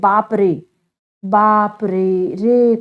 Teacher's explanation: य चिल्लाने में प्रयोग होता है जैसे बाप रे बाप रे रे कहने में जब हम प्रयोग करते हैं तो आवाज बहुत देर तक निकलती है ये क्या होता है त्रि मात्रिक कहलाएगा बच्चों यानी प्लुत त्रि · इनके उच्चारण में एक मात्रा का 3 गुना समय लगता है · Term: प्लुत स्वर